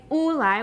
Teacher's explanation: some people in some situations say oolai with a glottal stop